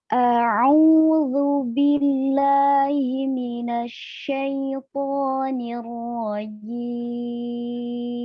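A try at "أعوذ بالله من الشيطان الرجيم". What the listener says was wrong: Ya, A-nya jangan langsung narik ke ain, Mbak. Jadi A sendiri, ain sendiri.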